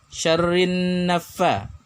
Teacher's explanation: alif lam bertemu dengan nun. Alif lamnya tidak dibaca al, tapi langsung dimasukkan ke huruf nun. Ya, dimasukkan itu bahasa Arabnya adalah idgham. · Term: idgham syamsiyah